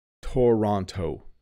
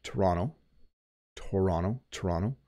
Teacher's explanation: you notice that the second T does have a D sound